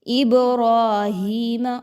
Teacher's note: با پر جزم کا نشان ہے جو کہ حروف قلقلہ میں سے ہے، تو با کو ہم اس لیے ہلا کے پڑھ رہے ہیں